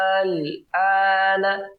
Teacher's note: bisa kita katakan panjangnya sampai 6 harakat atau ya 3 kali lipat dari panjang mad asli atau mad tabi'i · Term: mad lazim